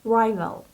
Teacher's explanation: It's in its plural form, and the singular form is rival. Rival, the stress is on the first syllable